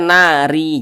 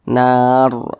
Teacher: ketika kita mengucapkannya pangkal lisan kita itu naik terangkat ke atas, ditebalkan. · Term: dibaca tebal